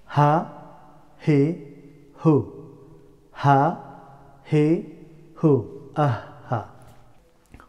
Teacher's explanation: the letter of ha pronounced from lower part of the throat